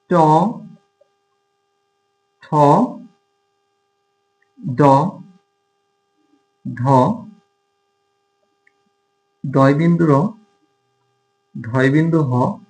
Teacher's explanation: জিভের ডগা বা জিভের যে সামনের অংশ এটা কি করে, এটাই মূর্ধাতে আঘাত প্রাপ্ত হয়ে যে ধ্বনি উচ্চারিত হয় সেটাকে বলা হয় মূর্ধন্য ধ্বনি। যেমন আমরা যদি এখানে ধরি যে ট, ঠ, ড, ঢ, ডয় বিন্দু র, ঢয় বিন্দু হ, তো এই ধ্বনিগুলো আসলে মূর্ধন্য ধ্বনি।